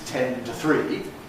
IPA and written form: ˈten tə ˈθriː (ten to three)